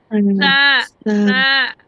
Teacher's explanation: উপরের দাঁতের সাথে নিচের জিভ আর আগাটা মিলে তা, উপরের দাঁতের গোড়ার সাথে আগার সাথে তা।